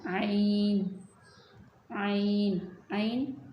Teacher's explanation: आइन और हा, इन दोनों का एक ही मखरज है, यानी गले के दरमियान से अदा होते हैं